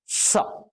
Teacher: बोलने की सीटी की बात मतलब बोलते समय सीटी बजेगी · पहले सरसराहट खूब आई उसके बाद जाकर के कहीं स आया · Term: पहला वाला स